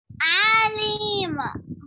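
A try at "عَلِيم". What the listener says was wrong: Alim, not Ali. There is fatha. Fatha is not stressed. Alim. Ya sakin before kasra is stressed. Alim.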